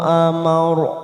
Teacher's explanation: ro sukun didahului fathah kita baca tafkhim.